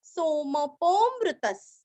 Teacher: सोमपो, पो के आगे अवग्रह का हल्का सा खींचेंगे और आगे अमृत, उसका मृत अ निकाल लेना। अमृत प पूरा पढ़ के विसर्ग का आधा स।